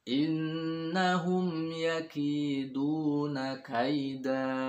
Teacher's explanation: kaida, 2 harokat, dan suaranya pastikan mengambang. Artinya di rongga mulut saja, tidak boleh berakhir di tenggorokan.